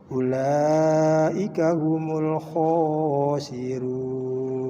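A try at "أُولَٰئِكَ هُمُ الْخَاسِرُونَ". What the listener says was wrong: Ulanya kurang panjang. Ulaika humul khasirun.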